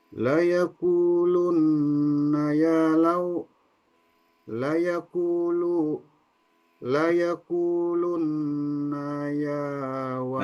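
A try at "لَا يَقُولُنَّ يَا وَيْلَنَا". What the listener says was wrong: Nah, jangan panjang. Layakulunna ya. Nanya pendek.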